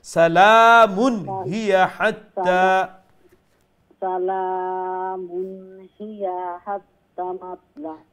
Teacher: سلام هي حتى سلام মানে কন্টিনিউ করলে মিমের উপরে যে তানবিন আছে এটা নুন সাউন্ডের স্পষ্ট করবা। সালামুন হিয়া হাত্তা, সালামুন হিয়া হাত্তা মাতলা, হাত্তা হাত্তা মাতলাইল।